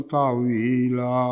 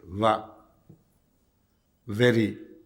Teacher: عربی واو دونوں ہونٹوں سے بنتی ہے جو انگریزی میں ڈبلیو ہے